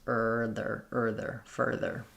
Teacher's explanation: So my fur is long and my there is quick. For the there, you can build it from just saying your and then sneak your tongue forward for the TH. · focusing on those tight back sounds to make sure that the R is strong in both syllables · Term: R sounds